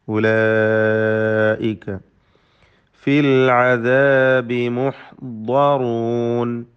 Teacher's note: തർക്കീഖാണ് ഐന്, അതിൻ്റെ മഖ്റജിൽ നിന്ന് ഉച്ചരിക്കണം. ഉലൈക മദ് മുത്തസിൽ വാജിബ് നൽകി 4-5 ഹറക്കത്തിൻ്റെ അളവിൽ അലിഫിനെ ദീർഘിപ്പിക്കൽ നിർബന്ധമാണ്.